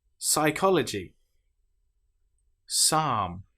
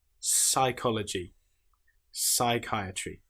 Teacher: Here we don't pronounce the P at all. We just pronounce the S sound.